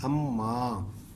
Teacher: الف زبر میم ام، میم الف ما، اماں. آگے نون کیا ہے، نون غنہ ہے، اور یہ نون موقوف ہے